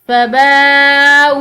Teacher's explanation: हमजा के बाद चूंकि ये वाव साकिन है तो इस हमजा को लंबा पढ़ेंगे।